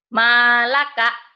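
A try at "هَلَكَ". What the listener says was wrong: Ma dari mana itu? Kalau ma itu kecil kepalanya. Ini kan kepalanya gede.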